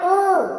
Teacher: आपके होठ जो है वो गोलाकार आकृति बना रहे हैं, वो अपना आकार दे रहे हैं कि आप ऊ शब्द का उच्चारण कर सके। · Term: ओष्ठ